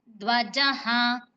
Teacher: అధ అనేది కూడా మహాప్రాణాక్షరం శ్రసిస్తూ పలకండి